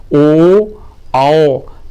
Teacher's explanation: होठों की आकृति वृत्त के समान गोल हो जाती है। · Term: वृत्ताकार स्वर